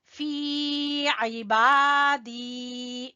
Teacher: فی کو کھینچیں گے یا مدہ کی وجہ سے